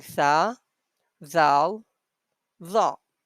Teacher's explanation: All of them have same point, which is upper surface of the tip of the tongue and the front upper teeth. In these pictures you can see we are using upper surface of the tip of our tongue here, and we are using the front upper teeth.